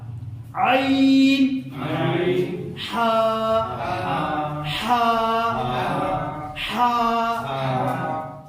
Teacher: عین اور ہا یہ آپ کا درمیانی حلق سے نکلے گا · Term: وسط حلق